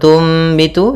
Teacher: cara membacanya adalah suara nunnya diganti dengan suara mim maka di sini ditandai dengan mim kecil Tum ya dimatikan sambil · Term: iqlab